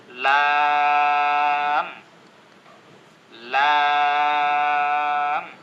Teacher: জিহ্বার আগাটা সামনের উপরে যে তালু আছে সে তালুর সাথে লেগে আছে।